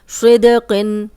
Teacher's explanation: اور قاف موٹا بھی ہے اور اس تنوین بھی ہے